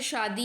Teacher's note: तो इस वाले श का जो उच्चारण स्थान है वह आपका है तालु